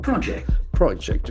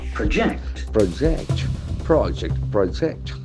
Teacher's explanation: Accordingly, the pronunciation will be different. As a noun, the accent falls on the first syllable. · As a noun, the accent falls on the first syllable. Project. Project. When it is a verb, the accent shifts toward the second syllable.